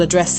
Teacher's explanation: The verb address, with the stress on the second syllable